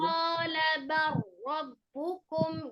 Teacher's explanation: Langsung ro tasdidnya, bukan lam. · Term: Idgham mutaqaribin